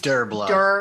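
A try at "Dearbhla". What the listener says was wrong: no, it's with the V. Dervla. It's the V again.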